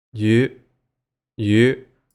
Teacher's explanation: That was the high rising tone.